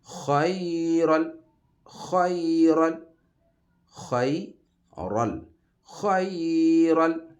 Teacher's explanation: خا حروف مستعلیہ ہے، 7 حروف جو ہمیشہ موٹے پڑے جاتے ہیں، ان میں سے اس کو موٹا پر پڑھنا ہے منہ بھر کے